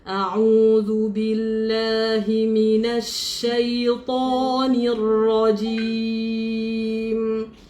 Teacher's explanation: Jaga shin tidak ada muncungan, ta tidak ada muncungan, ra tidak ada muncungan.